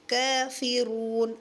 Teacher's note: را کو موٹا کریں گے، واو مدہ کا خیال رکھیں گے